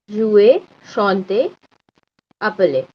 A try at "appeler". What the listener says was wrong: Appelé. Yes, very nice.